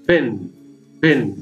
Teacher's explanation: It is bilabial, stop sound or plosive sound.